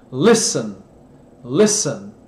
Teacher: Não se carrega nesse T, é leve. Em alguns casos você some totalmente. · Quando é ST, você come o T, muitas vezes.